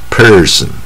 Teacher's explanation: 这个是卷舌，非常卷舌，它的发音部位在最下面啊，就是舌头要往下伸啊 ，往下颚啊，这个舌头最下面，口腔部分撑到最下面person